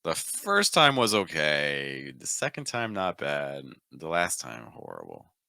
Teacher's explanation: Every single one of those thought groups, again, in this case, we're separating them by commas, moves down. We're lowering the pitch each time.